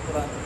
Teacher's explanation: نقل حرکت کا مطلب یہ ہے کہ حمزہ کا حرکت نقل کر کے ماقبل را کو دے دیتے ہیں اور حمزہ کو حذف کر دیتے ہیں، قرآن بن جاتے ہیں۔